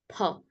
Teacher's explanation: ফ হবে না, এর উচ্চারণ হবে ফ ফ। দুই ঠোঁট এক হয়ে দুই ঠোঁটের উপর থেকে বাতাসটা নির্গত হবে